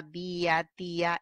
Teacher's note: tienes la vocal cerrada con mayor fuerza de voz